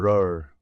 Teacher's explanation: mais attention pas un r français c'est un r roulé comme dans certaines langues européennes